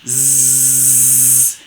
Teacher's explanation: suele ser una fricativa alveolar sonora